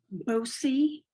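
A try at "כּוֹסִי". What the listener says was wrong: No, not bow. It's a cuff.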